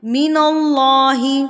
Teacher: ناک میں آواز گئی ہے لیکن ہم نے یہاں پہ رکنا نہیں ہے، اس کو ہم نے کھینچنا نہیں ہے، لمبا نہیں کرنا، اس کو ہم نے فوری سے ادا کرنا ہے. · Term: گنہ آنی